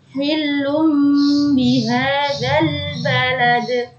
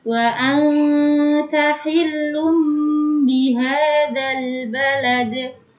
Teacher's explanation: Alif lam tidak boleh memantul. Yang dipantulkan adalah huruf dal yang terakhir karena dia termasuk huruf qalqalah.